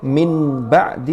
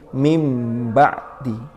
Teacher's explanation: Karena agar tamatsul mirip dengan ba dalam syafataninya, yaitu bibirnya, sehingga bukan min ba'di tapi menjadi mim ba'di. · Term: iqlab